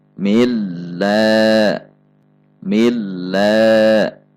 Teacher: cara membaca lam tasydid adalah tekanannya seperti turun, kemudian naik kembali. Tidak dalam tekanan yang tetap.